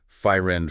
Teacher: there might be a tendency to uh maybe add a little vowel sound in between or perhaps drop one of the consonant sounds like saying fire end for friend something like that.